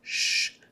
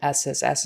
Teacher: it helps your tongue move back a little farther than S sh is back a little farther on the top of your mouth than SSS is behind the teeth sh is a little farther back in your mouth and not